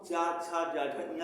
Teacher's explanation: तो जब हम चा छा जा झा इंगा कहते हैं, हमारी जीवा दांत के अंदर में जाकर के मसूड़े को टच करती है पीछे से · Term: तालु